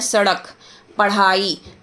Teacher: ड और ढ के उच्चारण में जीभ को ऊपर उठाकर आगे की ओर फेंका जाता है